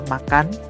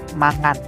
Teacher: Contoh kata dari kata makan dalam bahasa Indonesia bisa menjadi dalam bahasa daerah adalah mangan dalam dialek tertentu, di mana vokal menjadi lebih bernuansa nasal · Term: nasalisasi